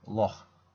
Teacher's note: This sound is pronounced in the back of the throat. This sound can be found in the Scottish word loch.